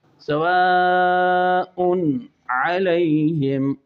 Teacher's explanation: سواء علیہم، علیہم، جو ہے تنوین ہے، تنوین کے بعد علیہم کے شروع میں عین آ رہا ہے حروف حلقی میں سے، تو یہاں اظہار حلقی ہے، یعنی غنہ نہیں کرنا، سواء علیہم نہیں کرنا، کیونکہ یہ لحن بن جائے گی، اور لحن کون سی، لحن خفی۔